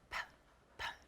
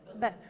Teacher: No vibration. Oh, no vibration for p. And b, it vibrates. Yeah, you're turning on your voice box for one and not for the other.